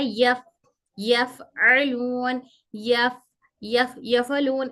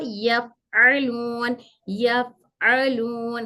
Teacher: हमारे ऊपर के 2 दांत जो सनिया उलिया है, वो दांत ऊपर के नीचे की होंठ की तरी, ऊपर के 2 दांत नीचे की होंठ की तरी से मिलकर हर फा अदा होता है। हमारे ऊपर के 2 दांत नीचे की होंठ की तरी, नीचे का जो होंठ है उसकी तरी पे ऊपर के 2 दांत नीचे की होंठ की तरी को टच होंगे, फिर फा फा अदा होगा।